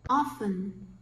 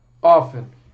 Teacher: Realmente, no inglês estadunidense, não se pronuncia o T.